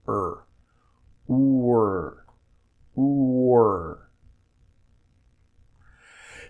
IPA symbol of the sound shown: r